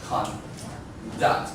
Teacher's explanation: the stress on the second syllable. If you use it as a verb